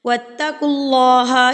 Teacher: جب اللہ سے پہلے پیش ہوگی یا اللہ سے پہلے زبر ہوگی تو آپ نے لفظ اللہ کو پر پڑھنا ہے